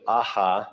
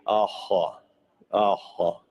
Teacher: The pharyngeal Hebrew H is reflected by Proto-Uto-Aztecan ho or hu. Now, the pharyngeal H is different than our English H. It's pronounced very gutturally in the pharynx. · For example, an example would be instead of aha with a regular H, aha, aha, very guttural H. And the gutturalness of it makes its tonality very similar to round vowels. And And in fact, it's always associated with round vowels like O and U.